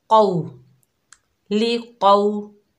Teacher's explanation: वाव लीन को नरमी और जल्दी से अदा करेंगे। क़ौफ हरूफ इस्ताला में से है, मोटा अदा होगा, यानी हैवी लेटर है।